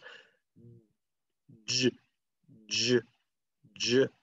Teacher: the first sound in my name is J, J, J, and you use your voice to say it